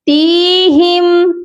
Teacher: تا کے ساتھ یائے مدہ ہے، اسی لیے ہم اس تا کو لمبا کر کے پڑھیں گے. تیہم نہیں پڑھا جائے گا.